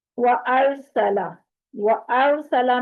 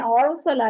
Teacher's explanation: وَأَرْسَلَ، وَأَرْسَلَ میں أَرْسَلَ نہیں کرنا، حمزہ کو پر نہیں کرنا، صرف وا کو پر کرنا ہے، اور سین اور لام کو لمبا نہیں کرنا۔